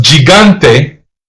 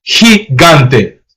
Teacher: the soft G sounds like an English H